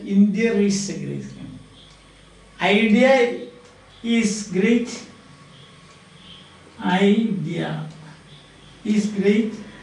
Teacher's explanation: some people when they pronounce, in speaking, they insert an R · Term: intrusive R